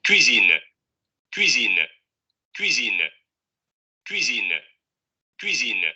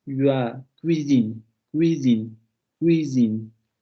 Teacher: Si ustedes pronuncian bien la palatal, la de ya, solamente hay que redondear los labios. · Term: semiconsonante